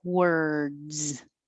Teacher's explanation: you're really just putting your tongue curled back in er position and just making the er noise